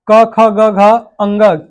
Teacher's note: कंठ से बोले जाने वाली ध्वनियां है